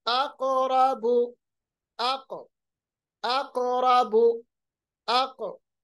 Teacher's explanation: कौफ की आवाज जब जज्म के साथ हो, सुकून के साथ हो, तो आवाज रिबाउंड होती है, जिसको हम कहते हैं कलकला।